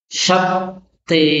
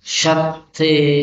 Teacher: Jadi shinnya besar, tebal, kemudian taknya tasdid